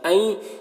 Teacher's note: نون کو یا سے ملا کر غنہ کے ساتھ پڑھیں گے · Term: ادغام ناقص